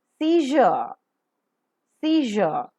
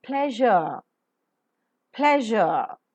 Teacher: The front and the blade of the tongue also are taken very close to the hard palate region. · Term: zh